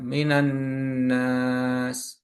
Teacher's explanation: di alif lam syamsiyah dibaca lebur atau idgham · Jadi ada sukunnya, ya ada sukunnya di eh, huruf di atas huruf lam. Sedangkan di alif lam samsiah dibaca lebur atau idgham